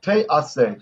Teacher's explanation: the short chirik, the I, like this I sound, gets lengthened to tsere